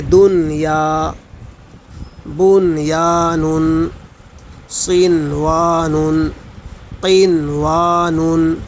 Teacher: ان کلمات میں غنہ نہیں کریں گے، اظہار کریں گے، یعنی ناک سے نہیں پڑھیں گے